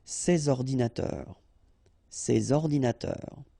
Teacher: you should make the liaison between s and o